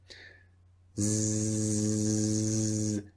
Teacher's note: Now you can feel a vibration when you make the sound Z. That is the only difference between the two sounds. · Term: Z sound